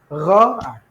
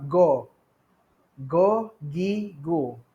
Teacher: Dia mesti akan rasa di bahagian kerongkong, menekan suara di permulaan halqum. Bahagian halqum kita ni dekat pangkal-pangkal dekat yang atas sedikit, kita akan bunyi gha, kita akan rasa gha.